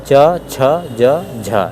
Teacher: स्पर्श संघर्षी ध्वनियां है च वर्ग की